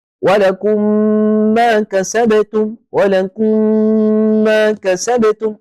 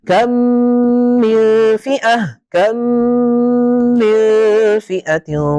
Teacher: وطبعا هناك غنه بمقدار حركتين لان الميم مشدده